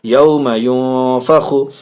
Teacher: نون ساکن کے بعد فا حرف اخفا میں سے ناک میں آواز جائے گی.